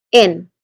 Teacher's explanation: there's a short E sound here, and then ending with a nasal sound N